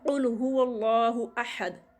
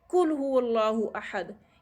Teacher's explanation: ये 2 डॉट्स वाला जो काफ है 2 डॉट्स वाला ये मोटा पढ़ा जाता है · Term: मोटे काफ